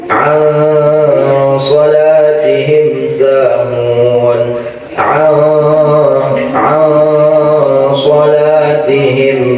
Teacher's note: Walaupun dia idgham, walaupun dia di antara izhar dan idgham, tetapi harus tetap ada dengungannya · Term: ikhfa hakiki